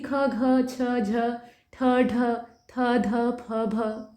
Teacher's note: इनके उच्चारण में आपको ज्यादा प्राण वायु का इस्तेमाल करना पड़ता है यानी ज्यादा वायु निकालनी पड़ती है। ऐसे ही कुछ महाप्राण व्यंजन होते हैं जैसे कि ख, घ, छ, झ, ठ, ढ, थ, ध, फ, भ ये सब आप पढ़ रहे हैं ना इनको जब आप पढ़ेंगे ना तो ज्यादा जैसे फूंकना पड़ेगा बाहर की ओर। · इनको जब आप पढ़ेंगे ना तो ज्यादा जैसे फूंकना पड़ेगा बाहर की ओर। यानी जो आपकी प्राण वायु है, आपकी श्वास है उसका आपको भरपूर इस्तेमाल करना पड़ेगा।